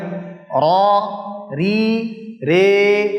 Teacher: র, রি, রে, তিনটা সাউন্ড পাইলাম, ফাতহা, কাসরা, আর তার ঠিক মাঝখান বরাবর কি? ইমালা।